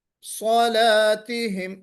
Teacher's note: صلاتهم لام کو باریک، صاد کو موٹا